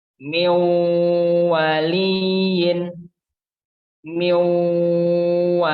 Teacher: Lalu yang terakhir adalah contoh dari nun sukun atau nun mati bertemu dengan waw. Sama juga nunnya tanpa kita baca, langsung kita baca wawnya. Dengan cara didengungkan atau ditekan. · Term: idgham bi gunnah